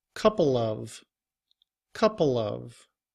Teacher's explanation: we do not drop the v sound when the following word begins with a vowel. However, there is still a change in that we're not saying uh but we're using the schwa sound which is more of a uh uh however when combined with couple we say it quickly al together couple of couple of.